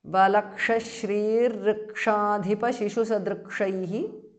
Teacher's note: Visarga changes to Repha.